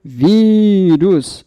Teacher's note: Vírus, a sílaba tônica é o vi. Claro que quando eu tenho o acento gráfico, fica ainda mais evidente, justamente pela acentuação gráfica.